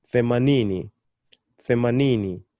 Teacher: I'm still putting my emphasis on the second to the last syllable, ni.